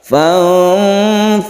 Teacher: Ketika kita membaca nun mati, kita bersiap membaca fa, tapi tidak dimasukkan ke fa karena bukan idgham. Ketika kita itu membaca nun mati, kita dengungkan atau kita panjangkan sembari kita itu menyiapkan rongga mulut kita membaca fa. Jadi makhraj fa kita siapkan ketika membaca nun mati, itu namanya ikhfa.